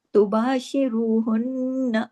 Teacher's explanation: वला तुबाशिरूहुन्ना, तुबाशिरूहुन्ना, अब रू को हैवी करना है, जबर, जबर और पेश जब रा पे आ जाता है तो रा हैवी पढ़ा जाता है। फिर हुन्ना, नून पे तशदीद है, डबल नून है, गुन्ना बड़ा होगा।